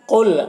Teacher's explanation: قل قاف حروف مستعلیہ میں سے ہے تو قاف کو پر پڑھیں گے · بالقسط قاف حروف مستعلیہ میں سے ہے اور طا بھی حروف مستعلیہ میں سے ہے، اور وقف کی صورت میں طا حروف قلقلہ میں سے بھی ہو جائے گا تو قلقلہ ہوگا